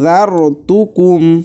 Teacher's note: আংযারতুকুম, এখানে নুন সাকিনের পরে জালটা ইকফার হরফ এসেছে, যার কারণে গুণনা করে পড়তে হবে।